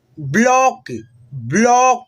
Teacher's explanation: इसको हम लोग हल्का जो होता है ना ओ की साउंड में उच्चारण करते हैं। जैसे यहाँ पे देखिएगा पढ़ेंगे ब्लॉक, ब्लॉक, ओ की थोड़ा सा मतलब साउंड आएगा।